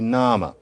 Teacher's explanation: And of course, it is that the word actually was once pronounced name, and then it weakened to nama with this kind of indistinct sound that's called a schwa